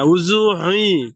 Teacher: এই শেষের পেশটা ইয়ার সঙ্গে মিলে যাচ্ছে, এই মিলে যাচ্ছে, তার জন্য দু পেশটা উচ্চারণ হচ্ছে না।